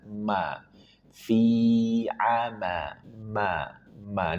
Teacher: Kemudian huruf mim. Dua bibir dipertemukan dan dirapatkan dan disertai dengan ghunah